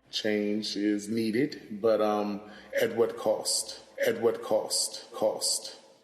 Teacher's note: another feature that we see in DC similar to New York is the raised thought cloth vowel